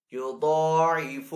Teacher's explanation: ضاد کے اوپر یہاں پہ کھڑا زبر ہے تو ضاد کو ایک الف دو حرکات کے برابر کھینچ کر ادا کریں گے. ضاد کو ساتھ پر بھی پڑھیں گے.